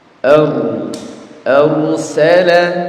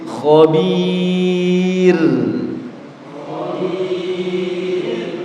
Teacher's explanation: ro itu baik tebal ataupun tipis tetap sifat takrirnya tidak boleh hilang jadi getarannya tidak boleh hilang